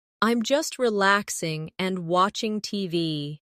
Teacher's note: No long pause between relaxing and and.